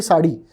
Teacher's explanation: But the problem there is that it's a sound which is halfway between a R and a D